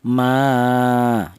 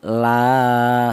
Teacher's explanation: panjangnya satu alif atau dua harakat atau dua ketukan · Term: mad thabi'i